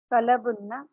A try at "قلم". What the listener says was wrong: قلب تو نہیں ہے, یہ ہے قلم, اس کے اوپر زبر آ رہی ہے.